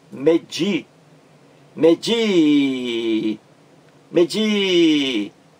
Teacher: Então, o di aqui é a sílaba mais forte da palavra, final da palavra. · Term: palavra oxítona